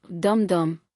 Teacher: Spondee, two stressed syllables, DUM DUM, creates heaviness